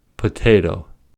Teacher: In potato, the P is aspirated because it is at the beginning of the word, and the T is aspirated because it's at the beginning of a stressed syllable.